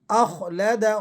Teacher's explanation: خو کی آواز کو ذرا آپ نے موٹا کر کے اور پر کر کے ادا کرنا ہے